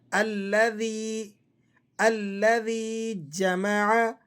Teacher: جب زبان کی نوک اوپر والے دانتوں کے ساتھ ٹکرائے اور تھوڑی سی باہر نکل آئے منہ سے، تو اس سے یہ حرف ادا ہوتا ہے ذال